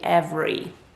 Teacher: we do not pronounce the letter e in the middle it actually just gets completely dropped